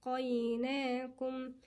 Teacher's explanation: السين هنا في همس جريان نفس